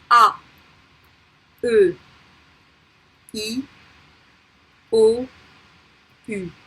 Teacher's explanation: I'm exaggerating a little bit the pronunciation, but not that much. They are tense. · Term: les voyelles orales simples